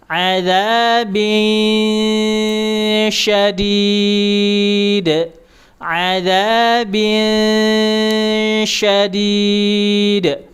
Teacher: Diarahkan ke huruf sya. Lidah tengah dinaikkan.